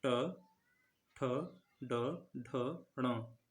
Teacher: अब इनको बोलेंगे तो जीव वहीं टकराएगी, यानी दांत और तालु के बीच में। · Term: मूर्धा